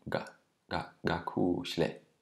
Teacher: Notice that the K without an H is not aspirated, so it almost sounds like a G. It's very often closer to a G than to a K.